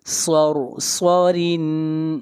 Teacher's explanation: یہاں پر را کو باریک پڑھیں گے، را کے نیچے زیر ہے اور یہاں پر اظہار ہوگا۔